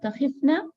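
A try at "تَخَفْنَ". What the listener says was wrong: No, not takhifna. Takhafna. Takhafna. Kha has a fatha.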